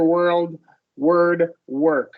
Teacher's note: all we're doing here is we're making a longer R sound. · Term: schwa R